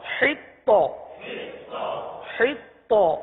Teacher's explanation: یہاں پر قلقلہ مشدد ہو رہا ہے، جماؤں کریں گے اور قلقلہ بھی کریں گے